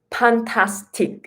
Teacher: we don't have F sound, so F is replaced by P. So like fantastic, you know, then we say fantastic.